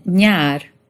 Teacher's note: This was an N made with the middle of your tongue against the roof of your mouth.